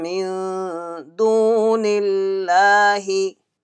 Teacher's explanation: with nasal sound, stretching one alif or two alif